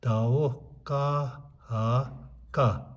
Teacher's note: So when we say ka, ha sound is already there. So additional ha will not make any difference.